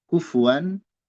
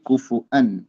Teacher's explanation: domah pada fa kufu yang jelas wan wau jangan jadi hamzah, jangan jadi kufuan ahad.